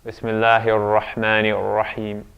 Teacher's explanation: when you're pronouncing Quranic Arabic in the best way, you wouldn't be rolling the R's